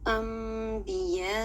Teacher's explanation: آپ یہ دیکھ رہے ہیں با کی مثال، نون ساکن ہے، اس کے اوپر چھوٹی سی میم لکھی ہوئی ہے، تو ہم اب اس نون ساکن کو میم کی آواز میں بدل دیں گے، اور یہاں پر جو غنہ کریں گے 2 سیکنڈ کا کریں گے اور اس میں خفیف غنہ کریں گے، ٹھیک ہے۔